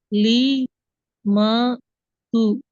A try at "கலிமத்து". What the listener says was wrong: கலிமாத்து அப்படியா? இதுல எந்த ஒன்றையும் நீட்ட இயலாது. அடுத்த முக்கியமான விஷயம், க என்கிறது பிழை. அது நீட்டுறீங்க. க என்றால் நீட்டுறோம் வேணா. உதாரணத்துக்கு தமிழ்ல சொன்னோம் என்றால் க என்று இதை சொல்லுவோமா? சொல்ல மாட்டோம். இதை எப்படி சொல்லுவோம்? ரெண்டாவது க. ரெண்டு வித்தியாசம் இருக்குதா? வித்தியாசம் இருக்குது.